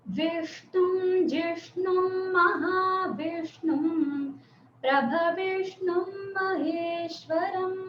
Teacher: మనము ష అని ఉన్నది మూర్ధన్యం అన్నమాట. మూర్ధ అంటే నోటి పై భాగం. మన నోట్లో రూఫ్ ఉంది కదా, అంటే మన ఇంటికి ఛత్ ఉన్నట్టు మన నోట్లో ఛత్ ఉంది కదా, ఆ ఛత్ కి అంటించి షా రావాలి.